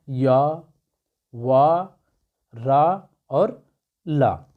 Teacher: इनके उच्चारण में जिह्वा ताल मूर्धा दंत के पास आ जाती है परंतु स्पर्श नहीं करते। अर्थात हम कह सकते हैं कि जो यह अंतस्थ व्यंजन होते हैं, यह इनकी आवाज़ जब हम इनको बोलते हैं तो इनकी जो ध्वनि निकलती है यह कहीं भी टकराती नहीं है, यह सीधा क्या होती है, बाहर निकलती है।